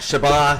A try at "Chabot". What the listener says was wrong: It it's Chabot. The T is silent.